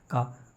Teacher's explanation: का बोलेंगे तो कंठ से छू करके निकल रही है एकदम से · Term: व्यंजन